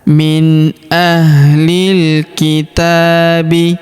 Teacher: Huruf ta kita panjangkan dua harakat karena terdapat alif kecil di atasnya.